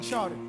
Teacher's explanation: there's a little difference when there's an R after the ah. We say vowels are R-colored when that's the case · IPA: /ɑ/